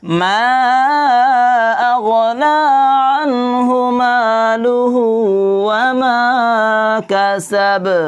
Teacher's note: এরকম করে কি করতে হবে? লাস্টের হরফে বাটা কলকলা করে পড়তে হবে।